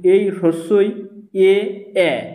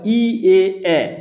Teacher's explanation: ই এ উচ্চারণ করার ক্ষেত্রে জীবটা দেখো সামনের দিকে থাকছে তাই এগুলোকে সম্মুখ বলা হয়